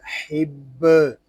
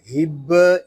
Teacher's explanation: یہ ہا دو آنکھوں والا نہیں بلکہ یہ ہا جو ہے حلق کے درمیان والے حصے سے ادا ہوگا